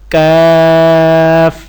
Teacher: قاف کے مخرج سے ذرا نیچے منہ کی جانب زبان کی جڑ کے قریب اور اس کے مقابل تالو سے ادا ہوتا ہے